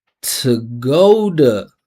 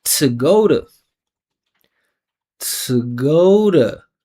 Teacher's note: To go, putting all that attention on the pitch in the O. And because this T is unstressed, surrounded by vibrating vowels, I'm turning it into a flap T. So I'm saying tuh-GOH-duh.